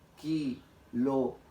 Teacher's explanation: La sílaba tónica está acá, en gra. En cambio, las demás se han pronunciado de manera leve.